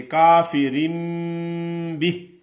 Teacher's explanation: نون ساکن اور تنوین کے بعد بتایا گیا تھا کہ با کا حرف آ جائے تو نون کو میم سے بدل کر پڑھیں گے